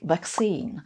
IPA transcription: vækˈsiːn